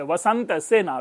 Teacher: दोनों में देखेंगे दंत्य स है